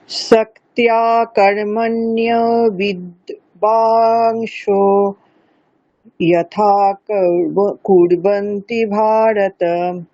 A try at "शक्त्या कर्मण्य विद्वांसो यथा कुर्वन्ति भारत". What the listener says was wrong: সপ্তা, হ্যাঁ সপ্তিয়া নয়, ঠিক আছে, সপ্তা সিম্পল আকার, ওখানে জফলা নেই। সপ্তা কর্মণ্য বিদ্বাংসো যথা কুর্বন্তি ভারত।